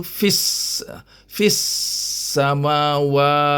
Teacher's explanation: Alif tu alif hamzah wasal, tak bunyi. Lam dia tak ada tanda baris. Jadi bunyinya terus pada sin. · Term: Idgham Syamsiah, idgham syamsiah